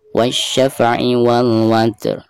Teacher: Pertama kita baca huruf ta-nya sekaligus hamasnya, lalu ujung suaranya diikuti dengan huruf ro sukun. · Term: dua huruf sukun